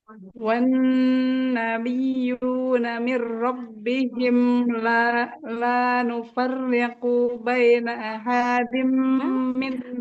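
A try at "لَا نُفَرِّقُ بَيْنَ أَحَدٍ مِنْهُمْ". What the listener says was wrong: Panjang pendeknya. La nufarriqu baina ahadim minhum. Huruf H-nya nggak panjang, Qaf-nya juga nggak panjang.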